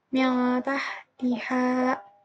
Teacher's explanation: membaca nun mati atau tanwin secara samar disertai dengung jika bertemu salah satu dari 15 huruf ihfa berikut.